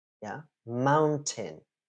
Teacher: where is the stress in the word mountain? It's on the first syllable.